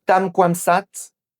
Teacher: Ici, voulait dire tam kwam saat, littéralement faire du propre. Mais il a fait la liaison et il a fusionné les deux syllabes en un seul son fluide. Résultat, il a dit sat.